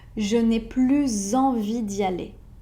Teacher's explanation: quand le mot après plus commence par une voyelle. Donc là, dans ce cas-là, il y aura une liaison.